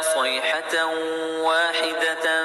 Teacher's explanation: ان کانت صیحۃ میں ادغام ناقص ہوگا، تنوین کے بعد حروف یومن میں سے یا واو میم نون میں سے واو آیا ہے، تنوین کی آواز کو واو میں ملا کر غنہ کے ساتھ پڑھیں گے۔ صیحۃ، اسے ادغام ناقص یا ادغام مع الغنہ بھی کہتے ہیں۔